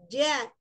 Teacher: Ujung lidahnya menempel ke bagian gusi yang lunak, gusi depan, ya. Ja, yang cekung. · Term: huruf jim